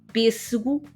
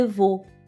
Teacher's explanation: uma vogal que pronunciamos com a boca menos aberta, como E de pêssego ou O de avô. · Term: vogal fechada